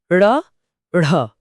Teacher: इन्हें बोलते समय जीभ पहले पीछे मुड़कर तालू को छूती है और फिर झटके से नीचे गिरती है। जैसे किसी ने कोई भारी चीज नीचे फेंक दी हो। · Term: उत्क्षिप्त व्यंजन, उच्छिप्त व्यंजन